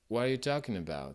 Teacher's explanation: C'est pas un T avec la pointe de la langue, c'est un coup de glotte